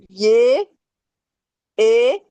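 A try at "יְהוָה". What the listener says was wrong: Non, non, non, non, non, non, non, non. Non, le E, ça prononce comment? Eh bien, pourquoi tu le prononces?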